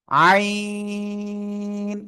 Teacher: গলাটা চেপে এক আলিফ, দুই আলিফ, তিন আলিফ, চার আলিফ টেনে উচ্চারণ করব। আইন, জাস্ট এই যে একটা বাঁক হবে।